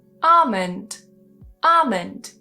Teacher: So if we have the combination ALM, ALF, or ALK in a word, typically that L in the middle is silent